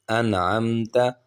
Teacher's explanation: حمزہ زبر نون ان، عین زبر میم عم، انعم، تا زبر تا، انعمت۔ اب یہاں پر اخفا کی ساؤنڈ نہیں نکالیں گے، بغیر اخفا کے ہم یہاں پر پڑھیں گے